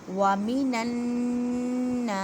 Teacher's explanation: اب نون مشدد اور میم مشدد پر غنہ کرتے ہیں، غنہ کا مطلب ہے 1 الف کی مقدار میں آواز کو ناک میں لے کے جانا وَمِنَ النَّاسِ، نا کو 1 الف کی مقدار میں کھینچ کر پڑھیں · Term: الف مدہ